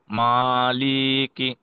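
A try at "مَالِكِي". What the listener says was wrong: লিতের কিন্তু টান হবে না। হ্যাঁ, মালিকি। জি, মালিকি।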